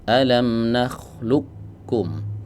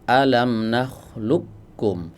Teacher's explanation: sepakat para ulama bahwa qof diidgamkan ke kaf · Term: idgham